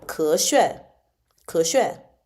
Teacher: it's going to be 咳 going up and then 血 going down